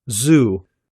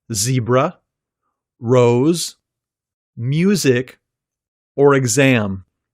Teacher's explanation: this sound is made by partially blocking the air flowing between the tip of your tongue and your alveolar Ridge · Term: Z consonant